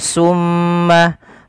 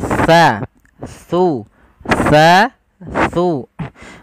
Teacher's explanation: makhrajnya ujung lidah ujung lidah kita menempel dengan gigi seri atas kita